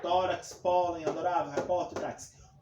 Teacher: a penúltima sílaba mais forte